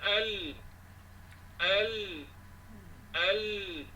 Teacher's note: Antara dua tepi hujung lidah bertentangan dengan gusi dua gigi kacip tengah. Keluar daripadanya huruf lam.